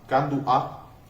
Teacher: En varias palabras hay como una pausa que existe entre dos vocales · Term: pausa glotal